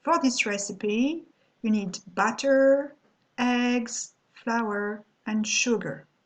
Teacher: hear my voice sugar is declining because it's the end of my sentence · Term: falling intonation